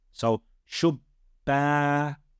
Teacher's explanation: And connected to that letter is actually the alif of med. So it's lengthening the fatha on the ba.